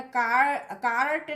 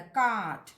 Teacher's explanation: In RP the letter R is silent before consonants. अगर consonants के पहले कोई R है तो उस R का pronunciation नहीं होगा।